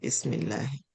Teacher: we pronounce with a light, thin sound when the preceding letter has a kasra